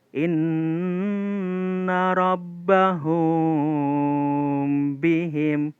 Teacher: mimnya menyamar, tidak jelas. Nah, itu ya, itu nama ikhfa syafawi.